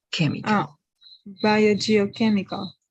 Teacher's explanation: instead of ch, here it's only going to be k